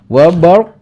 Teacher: hukum bacaan tafkhim karena sebelum lafaz ro harokat fathah ya, dibaca tebal